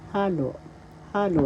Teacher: The accent is on the first syllable